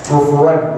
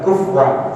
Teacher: kadang-kadang bacanya cepat jadi kufwan. Sebenarnya adalah kufuwan.